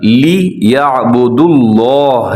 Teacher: لفظ اللہ کو پھر موٹا پڑے گا کیونکہ پہلے دال کے اوپر پیش ہے